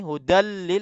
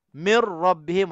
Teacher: Nun mati dan dengung kita masukkan habis-habis ke dalam hurufnya ra dan lam. Maknanya martabat yang idgham kamil ini kena kepada idgham bila gunnah.